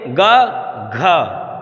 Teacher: गा की अपेक्षा घा में हवा ज़्यादा निकल रही है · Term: महाप्राण